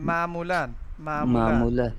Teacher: فارسی جی میں جی بالکل وہ عین کو حلق سے نہیں بولیں گے